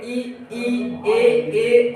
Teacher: इनको बोलोगे तो जीभ के आगे वाले भाग का प्रयोग होगा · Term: अग्र स्वर